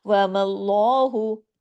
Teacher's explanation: अल्लाह के नाम से पहले जब ज़बर या पेश होगा तो अल्लाह के नाम में लाम जो है सिर्फ वो मोटा करके हैवी करके पढ़ा जाएगा। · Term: लाम जलाला